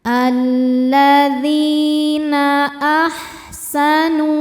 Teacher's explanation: dzi hukumnya mad thobi'i zohiri sebab ada ya sukun sebelumnya kasrah. Cara bacanya panjang dua harakat. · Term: mad thobi zohiri